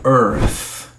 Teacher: tem que ser pronunciado forte na primeira sílaba e o th ele diminui